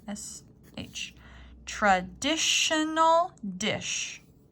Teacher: even though it's spelled differently this T is actually an SH sound